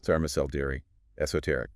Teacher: Stress on the third syllable.